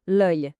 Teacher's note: Essa aqui é uma daquelas palavras com uma pronúncia bem particular do francês. O som é quase como se a gente falasse oi bem rapidinho, sabe? Com a boca um pouco mais fechada.